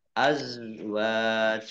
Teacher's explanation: za sukun ya, bukan kolkolah, jangan dipantulkan ya. Azwajukum wawu fathah alif mat tobi'i panjang 2 harokat.